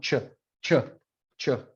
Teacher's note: palate and your alveolar ridge just make the same sound ch where your tongue is hitting it's kind of right between the alveolar ridge and your hard palate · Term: cha